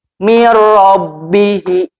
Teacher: nun mati langsung masuk ke huruf ro tanpa ditahan. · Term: idgham bila guna